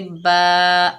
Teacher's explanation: बा के ऊपर ज़बर है, आगे अलिफ खाली है, ये अलिफ मद्दा है, एक अलिफ की मिकदार खींचकर पढ़ेंगे